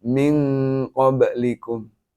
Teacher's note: Cara membacanya samar antara bunyi N dengan bunyi huruf ikhfa. Suaranya menjadi suara NG.